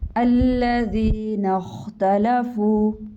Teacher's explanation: خا کو موٹا کیجیے، حروف مستعلیہ میں سے ہے